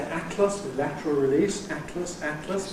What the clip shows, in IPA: ˈætləs